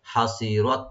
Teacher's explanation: র এখানে ডিপ হবে, আর তা এখানে হামস করবো একটু আমরা, একটু হালকা হাওয়া মানে একটু কন্টিনিউ থাকবে। হাসিরাত এভাবে।